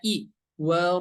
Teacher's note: cara membacanya ya hurufnya berharakat sukun dibaca menjadi i ya ingat Bukan dibaca menjadi E tapi dibaca menjadi i